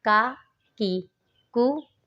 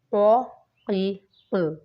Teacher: اس کے بعد آتا ہے کاف اور قاف۔ جو کاف ہے وہ باریک پڑھا جائے گا، اور جو دو نقطوں والا قاف ہے اس کو ہم لوگوں نے پر پڑھنا ہے، حروف مستعلیہ میں سے ہے۔